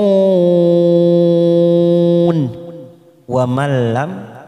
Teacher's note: nun sukun bertemu lam, namanya idgham bila guna, hanya masuk tanpa kita tekan lama-lama, tanpa mendengung.